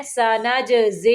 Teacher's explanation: سنج، جیم کو کلکلا کرنا ہے۔